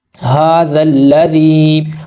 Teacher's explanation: ہا کے اوپر کھڑا زبر ہے، 2 حرکات کے برابر لمبا ہوگا، زال کو لام سے ملائیں گے، جمع سختی کریں گے، یہ جو دونوں الف ہیں ان دونوں کو نہیں پڑھا جائے گا، یہ سائلنٹ ہیں۔